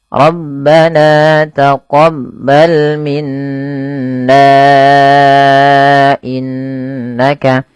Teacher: Apabila ada huruf nun berharakat tasydid maka dibaca dengan bacaan ghunah. Cara membacanya menahan suara bunyi n ya.